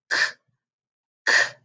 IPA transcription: k